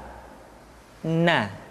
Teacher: Caranya menyentuhkan ujung lidah kita di antara posisi ro dengan la. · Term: huruf na